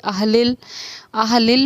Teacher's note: میم کی آواز لوٹنی نہیں ہے، ایک ٹھہراؤ اس میں ہونا ہے۔ ایسے ہی اہلل، اہلل میں لل پر آواز رکنی ہے، لل لوٹ کر آواز نہیں آنی، قلقلے کو روکنے کی بھی ہمیں مشق کرنی ہے۔